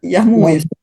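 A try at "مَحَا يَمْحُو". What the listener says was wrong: Yamhu, huruf mim dulu.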